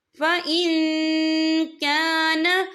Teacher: یا دیکھیں فَإِن، یہاں نون ساکن ہے، نون ساکن کے بعد جو ہے کاف آ رہا ہے، کاف جو ہے اکفا کا ورڈ ہے، تو ہم یہاں اکفا کریں گے، نون ساکن کی آواز کو ناک میں چھپائیں گے۔